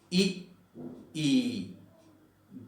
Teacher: ये तालु के आसपास इसकी ध्वनि उत्पन्न हो रही है, लघु ई और दीर्घ ई। इस प्रकार इनको क्या कहेंगे, तालव्य।